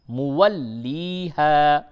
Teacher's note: اور یا اور الف کو کھینچیں تھوڑا، یہ مدہ ہے